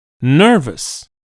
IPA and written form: ˈnɜːrvəs (nervous)